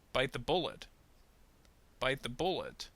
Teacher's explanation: So first off, bite is going to receive a little bit of stress, and then bullet is going to receive a little bit of intonation, and then bullet's going to receive even more. The, on the other hand, you will probably notice, will almost sound like it's going to disappear.